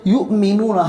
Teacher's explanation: یا حمزہ پیش یو، جھٹکا دے کر پڑھیں گے